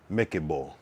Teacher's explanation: Oh, the O. Oh, so don't necessarily pronounce the L. A softer L.